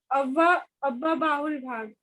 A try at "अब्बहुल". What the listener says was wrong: अब्बा बाहुल नहीं, अब बहुल है। अब बहुल, फिर से बोलो। अब बहुल, बहुल बोल दो और अब और जोड़ दो। अब बहुल भाग, ठीक है ना।